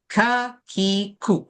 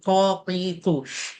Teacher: Bila lidah yang paling pangkal kena dengan langit-langit bunyi dia jadi macam huruf Q. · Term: qaf